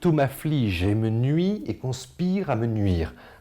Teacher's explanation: Vous voyez bien la répétition de ce son vocalique « i » qui ici sonne à la fois comme une agression et une hantise.